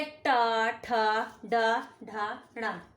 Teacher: इन अक्षरों को बोलने के लिए जीभ की जो नोक होती है, पॉइंट, जो जीभ का पॉइंट होता है, वो तालू के ऊंचे हिस्से को छूता है। जो गहराई वाला तालू का हिस्सा होता है ना, ऐसा वाला, ये पॉइंट जीभ को उसे टच करता है ऐसे। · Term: मूर्धन्य